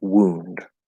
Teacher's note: the W goes straight into the u vowel sound so it's like like this wound okay now I know that